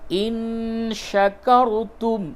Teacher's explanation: نون ساکن کے بعد شین ہے اخفا ہوگا